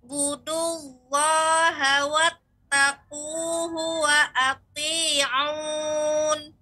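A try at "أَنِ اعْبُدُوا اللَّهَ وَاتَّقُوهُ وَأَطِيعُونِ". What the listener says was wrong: Ya, kemudian dal ini dengan punggung ujung lidah. Jadi tidak dengan ujung bagian tepi pas. Jadi tidak dengan itu. Budu bukan, namun budu. Ani'budullaha wattaquhu wa ati'un.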